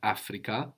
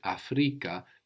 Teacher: So not Africa, but Afrika, the accent on the penultimate syllable